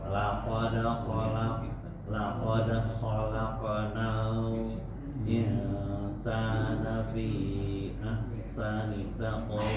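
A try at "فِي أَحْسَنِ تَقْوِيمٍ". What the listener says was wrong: Haknya kurang. Ahsani, bukan kurang tipis, kurang hamznya. Ahsani taqwim.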